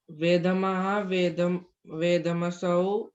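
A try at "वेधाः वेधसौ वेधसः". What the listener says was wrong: Don't use word ma now. वेदाः वेधसौ वेधसः.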